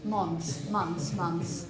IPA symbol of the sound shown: s